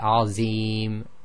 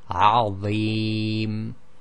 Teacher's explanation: that heavy sound comes from moving the tip of the tongue slightly in onto the inside of the upper front teeth